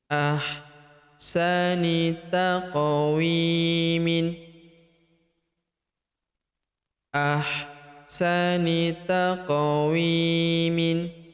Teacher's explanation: Ahsani taqa, huruf qaf berharokat sukun kita pantulkan atau kita qalqalahkan. Taqawi, huruf wi kita panjangkan 2 harokat karena terdapat ya sukun di depannya